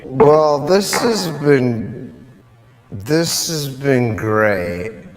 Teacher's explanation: The A is reduced to that quick schwa. Sometimes the H is even deleted altogether, and it will sound like z, z, z.